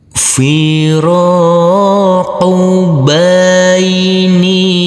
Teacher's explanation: Huruf nun yang berkasroh i ini bertemu dengan huruf ya sukun, maka dibaca panjang dengan panjang 2 harokat.